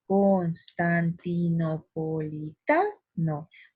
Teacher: En esta palabra larguísima, por cierto, observamos que la mayor fuerza de voz o la sílaba tónica se halla aquí en ta, porque yo pronuncio así, mira, Constantinopolitano. Observamos que en esta ta el acento es más fuerte. Entonces observamos que esta es la sílaba tónica, ya que ahí se articula la mayor fuerza al momento de pronunciar esta palabra.